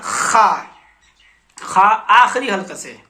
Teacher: خا آخری حلقے سے خا نکلتا ہے، سب سے اوپری حصہ آخری میں خا۔